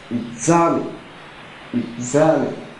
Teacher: the stress therefore is on the second syllable e e e z it falls on the second syllable that